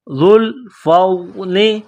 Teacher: ذال کو نرم کرنا ہے، زبان تھوڑی سی باہر نکالیں گے